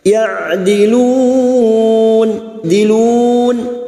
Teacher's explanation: Ya'dilun huruf ain jangan samakan dengan hamzah. Huruf ain yang memiliki sifat tawasud dan jahar.